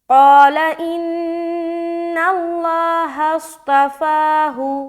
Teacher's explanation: ہم ہا کو صاد سے ملائیں گے، آواز موٹا ہوگا